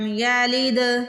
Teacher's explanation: دال پہ پھر قلقلہ کریں گے، دال کو ہلا کے ادا کریں گے